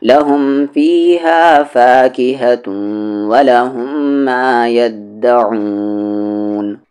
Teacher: عین کا مخرج بیچ والا حلق